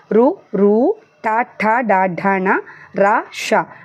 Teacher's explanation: మూర్ధస్థానం అంటే శిరస్సు నుండి పుట్టే అక్షరాలని మనం మూర్ధన్యాలు అంటాం. రు రు టా ఠ డా ఢ ణ రా ష అంటే టా వర్గం ఒకటి, రు ఒకటి, షా ఒకటి, రా ఒకటి, దీన్ని మనం మూర్ధన్యాలు అంటాం.